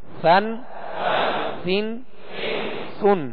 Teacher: بالکل نرم ہوا سے یہ ادا ہوتا ہے، اس میں سختی نہ ہو، سیٹی کی آواز پیدا نہ ہو